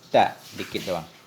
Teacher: Ta bermula ta itu sifatnya mahmusah. Dia halus, kecil.